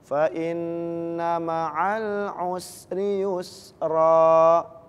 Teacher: Nah, di situ ketika diwakofkan khusus harokat fathah ta'in, maka dibacanya bukan sukun, bukan disukunkan, tapi diganti dengan harokat fathah. Jadi dia dibaca panjang.